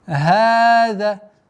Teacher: Долгота в размере двух огласовок фатха.